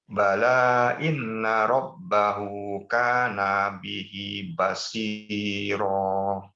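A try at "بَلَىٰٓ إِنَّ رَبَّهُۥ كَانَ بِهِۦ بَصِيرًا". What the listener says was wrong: Nunnya masih terpanjang dan bala dicukupkan harokatnya menjadi 4. Kalau mau disambung. Bala inna rabbahu. Misalnya disambung. Tapi kalau mau diwakafkan. Bala inna rabbahu kana bihi. Sampai akhir ayat.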